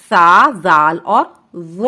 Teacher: زبان کی نوک جب اوپر والے 2 دانتوں کے سرے سے لگے تو اس سے سا، زال اور ظا ادا ہوتا ہے۔ سا اور زا جو ہے باریک پڑھے جائیں گے اور ظا موٹا پڑھا جائے گا۔ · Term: حروف لثویہ